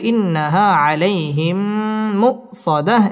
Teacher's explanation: মিম সাকিনের বামে মিম আসছে ইদগামে মিসলাইন গুন্না করে পড়তে হবে